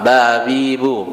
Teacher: makhrojnya di perut bibir bagian dalam